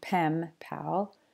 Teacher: to sound a little more like the following word so here when we have the N in pen it sound more like an M sound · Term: assimilation